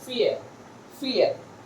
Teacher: So at last, the ra in this word is not articulated in English, standard English.